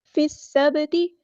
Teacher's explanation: یہاں پر با ساکن پہ کلکلا ہوگا ، فی السبتی، تا کے زیر کو لمبا نہیں کرنا، فی